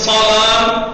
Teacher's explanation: سواد کو سوا پڑھنا ہے، منہ بھر کے